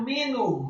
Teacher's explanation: ha-nya dibaca tafkhim tebal menggema di dada, cukup marfu atau dhammah satu harokat saja.